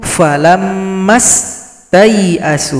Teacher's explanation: Huruf 'ta ' bergabung langsung dengan huruf 'ya'.